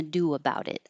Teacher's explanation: are going from a rounded do to an unrounded about daa it'll sound like a w if you're rounding your lips for do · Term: invisible W